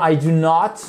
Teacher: on insiste plus sur le not do not généralement